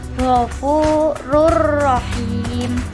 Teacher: idgham bilagunnah yaitu lebur tanpa disertai dengan dengung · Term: idgham bila gunah